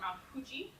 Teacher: So the bilabial fricatives. So this is like F and V, but not with your teeth, with both of your lips. So and they're hard for an English speaker.